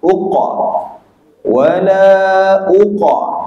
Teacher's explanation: Qaf yang mati itu, yang sukun itu kita qalqalahkan kubra dia. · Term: qalqalah kubra